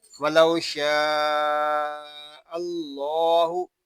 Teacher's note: اللہ پاک کے لام کو ہم پر پڑھیں گے کیونکہ اللہ پاک کے لام سے پہلے حرف پر زبر آ گیا ہے